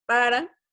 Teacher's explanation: Una vibrante simple para decir para. Ven que sus cuerdas vocales vibran un poquito. Se alcanzan a percibir.